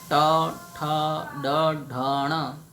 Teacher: મૂર્ધન્ય આ વર્ણમાલામાં જીભનો આગળનો ભાગ એ તાળવાને સ્પર્શ કરે છે